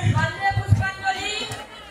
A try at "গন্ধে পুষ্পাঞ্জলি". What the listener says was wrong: আরে গন্ধেটা একটু চেপে বল। গন্ধে পুষ্পাঞ্জলি